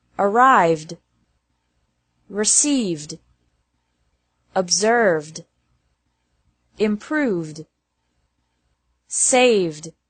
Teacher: It's also pronounced like D after verbs ending with a V sound